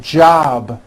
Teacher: job ends in a b which is a voiced sound job it's not J with an unvoiced P keep the voicing